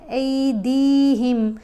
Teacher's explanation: الف زبر آ نہیں پڑھا جائے گا، الف زبر یا ای پڑھا جائے گا. دال کو کھینچ کر پڑھیں گے کیونکہ حرف مدہ ہے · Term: حرف لین